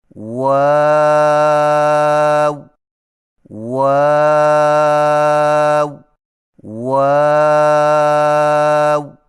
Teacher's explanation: ہونٹوں کو چونچ کی مانند گول کرتے ہوئے باریک آواز میں پڑھیں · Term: واؤ